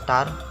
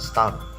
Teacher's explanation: the T sound in the word tar is normally pronounced with stronger puff of air than is present in the T sound in the word star